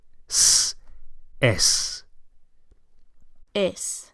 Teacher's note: To say it is or it's in Spanish only requires one word, es, with a nice s on the end. Not z, but s